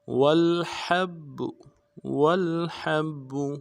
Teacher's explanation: والحب واو کو لام کو ساتھ ملانا ہے، ہا کو گہرائی سے ادا کریں گے، ہا کو با کے ساتھ ملانا ہے، با کے اوپر تشدید ہے، زور دیں گے.